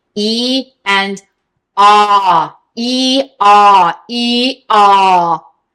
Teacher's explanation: And the ah, I feel it buzzing in the back. E, I feel it centered and buzzing in the front.